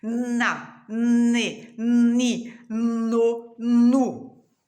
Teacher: O som do N, ele sai pelo nariz e você não encosta os lábios para falar. Pelo contrário, você fala com a boca aberta, os dentes mais fechados, a língua nos dentes. · Você abre a boca, os dentes estão fechados, a língua vai atrás dos dentes superiores. E se você colocar a mão aqui no nariz bem de leve, você sente o nariz vibrar